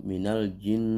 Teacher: Seperti kita baca nun yang bertasdid itu minal jin, ya pasti ada getaran-getaran di pangkal hidung atau di rongga hidung, ya itu disebut dengan al-khayshum.